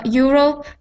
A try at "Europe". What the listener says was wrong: get I get those R sounds instead of being like Europe I want it to sound like EUR